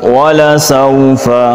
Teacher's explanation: سین پہ سیٹی، واو لین نرمی کے ساتھ